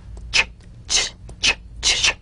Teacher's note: Place the tongue firmly on the upper gum ridge for the t. Then crash through gently but sharply with the sh